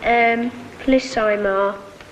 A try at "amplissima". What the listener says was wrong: Ema, not Ima.